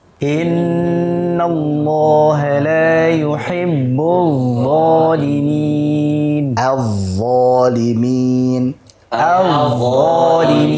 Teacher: Jangan sampai lupa memberikan sifat rakhawah. Jadi sengaja dialirkan.